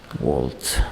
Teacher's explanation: Bizdagi va bilan emas, ikkita lab bilan talaffuz qilinadi.